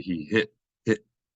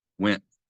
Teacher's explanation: say went and it's not that we don't pronounce the T we pronounce it but we pronounce it as a sound that is not actually a t we're pronouncing it as a glottal stop